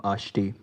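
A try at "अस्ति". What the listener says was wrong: Asti. Ashti ne. Asti. Asti. In Bengal, they say sha for sa. So it gets confusing. Bengalis, they mispronounce. Local practice was like that. It should be asti, not ashti.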